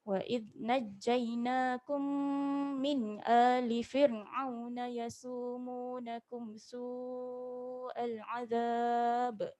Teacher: Sini ada mim bertemu mim. Jadi kita rapat bibir, kita dengung 2 harakat.